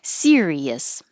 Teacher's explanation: Sirius has three syllables stress on the first syllable